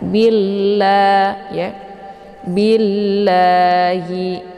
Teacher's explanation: lamnya dibaca tipis karena harokat sebelum lafdzul jalalahnya berharokat kisrah yaitu bi. Jadi cara baca billah ya, jangan billah ya, tapi ditipiskan billah ya, billahi. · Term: lafdzul jalalah tarkikun murakkakun